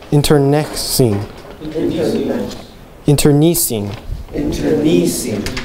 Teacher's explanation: Change the accent to the third syllable.